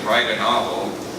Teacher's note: what could be a T could also be a tap, even across words · notice it's not a T, it's not a glottalized T, it's not a glottal stop. It's in fact a tap.